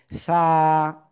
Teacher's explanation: জিহ্বার আগা উপরে দুই দাঁতের আগায় লাগিয়ে নরম করে বাতাস বের করে উচ্চারণ করব